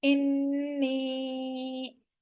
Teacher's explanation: नून मुशद्दद है तो गुन्ना कर रहे हैं, इसके साथ में या मद्दा है, 1 फिंगर स्ट्रेच करेंगे।